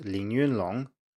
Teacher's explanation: most native speakers don't do it when they speak quickly instead it's very common to turn the middle tone into a first tone